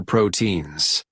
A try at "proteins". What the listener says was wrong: Okay, listen that the pronunciation is proteins, not proteins, right? Proteins, proteins. So we don't pronounce the E. Proteins, proteins.